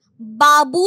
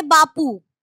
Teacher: ঘোষ ধ্বনি উচ্চারণে অঘোষ ধ্বনিতে পরিণত হয়। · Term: অঘোষী ভবন